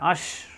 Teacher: শক্ত আওয়াজ, জিহ্বার মাঝখানে উপরে চাপ দিয়ে, আশ, শ্বাস আওয়াজ হবে